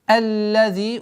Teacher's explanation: Аллади, удваиваем лям. Удлинение в размере двух огласовок. Каср применяем.